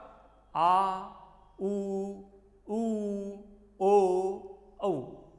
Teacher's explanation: जिह्वा के पिछले भाग से उच्चरित होने वाले आ, उ, ओ, औ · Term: पश्च भाग